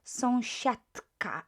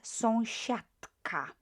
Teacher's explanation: because we've got unvoiced consonant k there, the d will sound more like t